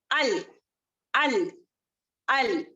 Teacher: حمزہ جو ہے باریک پڑھیں گے اس کو اول اس طریقے سے نہیں کریں گے.